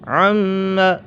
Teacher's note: عم میم مشدد ہے، میم مشدد میں ہمیشہ غنہ ہوتا ہے۔